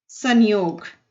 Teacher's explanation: एक बिंदु के रूप में लगाया जाता है अनुसार कहलाता है अनुस्वार के उच्चारण में ध्वनि नाक से निकलती है